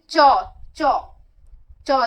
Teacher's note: এবারে দেখো কি আছে, চ, চ, চ দেখো জিভটা তালুতে লাগছে, তাই এটা তালব্য বর্ণ বলা যায়, এটা তালু থেকে হচ্ছে, তালু থেকে উচ্চারিত হচ্ছে।